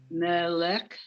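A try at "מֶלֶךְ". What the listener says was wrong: Not meh. Look at this, 1 dot. No. There's 2 dots under this scuff.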